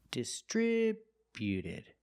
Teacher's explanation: Put the stress on the second syllable only.